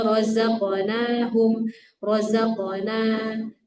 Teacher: dia punya sifat qalqalah pada huruf qaf